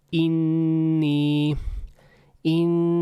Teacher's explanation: you can hear that the N sound is kind of held a bit longer